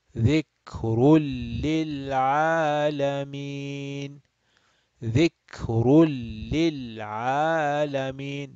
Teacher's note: we are going to again skip the noon sound, and this ra is going to go straight into lam